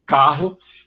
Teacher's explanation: a grande maioria do Brasil, o que faz aí é uma aspiração, seria um H